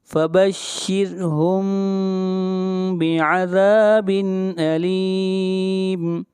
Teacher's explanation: را کو باریک پڑھیں گے، را سے پہلے زیر ہے